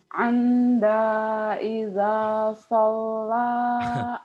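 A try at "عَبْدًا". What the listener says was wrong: Kok Anda? Itu kan abdan. Abdan.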